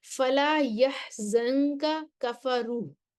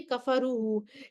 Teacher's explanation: یہاں پہ کفروا، یہاں پہ جو ہے سوسی کہتے ہیں کہ میں صرف اظہار کروں گا۔ دو کاف اکٹھے آ رہے ہیں لیکن سوسی کہہ رہے ہیں کہ میں صرف یہاں پہ اظہار کروں گا۔ وجہ اس کی یہ ہے کیونکہ اس میں کاف سے پہلے نون ساکن ہے اور لہٰذا اس میں قاعدے کے مطابق اخفا ہوگا۔